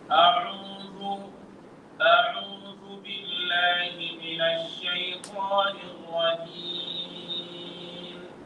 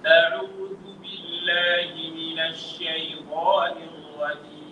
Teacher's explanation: Tunaona hata utofauti wa sauti, kwa sababu ya kwanza iliingia puani, ya pili haijaingia puani. Hii iliyoingia puani ni sauti ya makosa, kuna harfu nyingi zimeingia pale, kiasi ambacho hata kama nitabana pua nitashindwa kusoma, kwa sababu harfu nazitolea wapi?